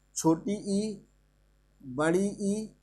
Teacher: समृद्ध स्वर को बोलते हैं इंग्लिश में क्लोज्ड, CLOSED, यानी इसमें मुख नहीं खुलता है, यानी वे स्वर जिनके उच्चारण में मुख ना के बराबर खुलता है